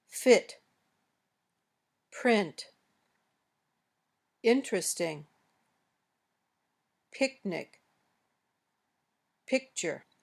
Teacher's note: Your lips are not rounded at all when you say this sound, similar to the shape for E.